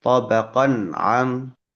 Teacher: Dan huruf ain pun dibaca jelas tanpa melebur dengan ee bunyi nun atau tanwinnya ya. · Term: izhar halqi